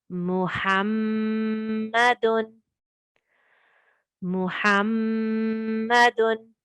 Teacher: Did you hear me put emphasis on the Mim Mushaddad?